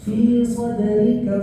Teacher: Dalnya dibaca memantul tetapi tidak terlalu besar. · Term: qalqalatus sughra